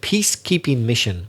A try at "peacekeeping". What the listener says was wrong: I think the stress was not on the first word, peace. I think Juan stressed peacekeeping. So it's peacekeeping. So stress the first word, peacekeeping.